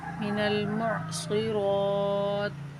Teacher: دو لفظ آپس میں مل رہے ہیں، اس لیے نون کو لام سے ملا کر چھوڑ دیں گے، منل پڑھ کر پھر اگلا لفظ پڑھیں گے، پھر دونوں لفظوں کو آپس میں اکٹھا پڑھیں گے، ٹھیک ہے۔